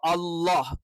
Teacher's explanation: തൊണ്ടയുടെ അടിഭാഗത്തുനിന്ന് വരുന്ന ഒരു അക്ഷരമാണ് ഇപ്പൊ അള്ളാ എന്ന് പറയുന്ന അ എന്ത് ചെയ്യണം അത് തൊണ്ടയുടെ താഴ്ഭാഗത്തുനിന്ന് തന്നെ